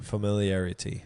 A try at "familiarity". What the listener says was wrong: You swallowed the first R.